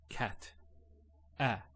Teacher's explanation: when we say this sound, the sound, you'll notice your mouth is open, wide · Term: fatha